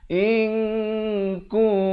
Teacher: Samarkan 2 harakat. Nak kata nun pun tidak, kaf pun tidak. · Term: ikhfa hakiki